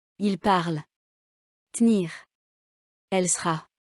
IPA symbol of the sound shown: ə